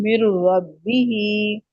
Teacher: नून साकिन के बाद रा है, तो वहां पे गुन्ना नहीं होता · अब ये इदगाम जो है ना, वो ये यहाँ पे जब होगा तो ये ताम इदगाम हो रहा है। मतलब कि अब मुकम्मल तौर पे ये नून जो है बिल्कुल नहीं पढ़ा जाएगा, ना इससे कोई सिफ्त रहेगी। मतलब कि मीम को डायरेक्ट, ये जो मीम है इसको डायरेक्ट रा के साथ मिला देंगे, मिर रब्बिही, ठीक है।